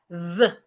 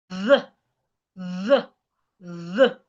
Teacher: It is articulated by placing your tongue in between your teeth and you make vibration. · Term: voiced TH